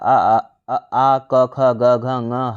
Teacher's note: ये कंठ से उच्चारित होते हैं।